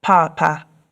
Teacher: which is a high tone and a low tone, and I believe that means dad.